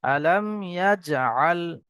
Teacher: মিম সাকিনের পরে এখানে ইয়া এসছে, ইজহারে সাফাবি, বিনা গুণায় তাড়াতাড়ি পড়তে হবে।